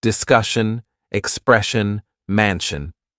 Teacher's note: Now move to the pronunciation of words ending with tion, sion, cian, and tian, and all of those, it's pronounced shun at the end. Shun. So, it's different spellings, different endings, but the pronunciation is shun for all of them.